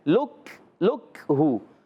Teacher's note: کاف اور تا یہ شدیدہ محموسہ حروف ہوتے ہیں